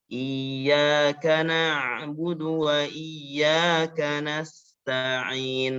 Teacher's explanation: Sin sukunnya sama seperti bis, dia harus ada desisan nafas.